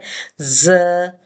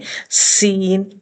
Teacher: یہ وسل ساؤنڈ والے ہیں، لہٰذا ان کو پڑھتے ہوئے ہمارے دانت آپس سے ملتے ہیں، سختی لے کے آتے ہیں، سیٹی کی آواز آتی ہے۔ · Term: وسلس لیٹرز